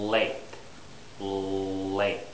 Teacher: it has to actually be touching the little ridge behind your teeth, the alveolar ridge.